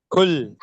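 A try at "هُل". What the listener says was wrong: ஹுல். பெரிய ஹா sound போகணும். ஹுல்.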